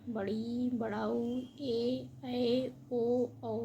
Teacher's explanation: जिन वर्णों के उच्चारण में ह्र स्वर से दुगना समय लगता है, वह दीर्घ स्वर कहलाते हैं।